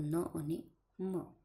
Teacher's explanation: તો શ્વાસનળીનું મુખપંથ બાજુનો માર્ગ બંધ થઈ જાય અને એના કારણે સમગ્ર હવા નાસિકા દ્વારા જ બહાર નીકળી શકે અને આ સ્થિતિમાં જે ધ્વનિઓ ઉચ્ચારાય છે તેને અનુનાસિક ધ્વનિઓ કહેવાય